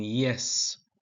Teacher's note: y in yes is formed near the hard palate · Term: palatal sounds